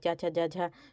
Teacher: च छ ज झ तो यह तालू से बोले जाते हैं